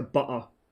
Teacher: in cockney you drop a double t it goes into a glottal stop